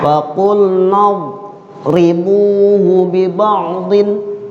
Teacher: Yang membedakan istitolah. Kalau dot itu dia punya karakter sifat istitolah, artinya panjang.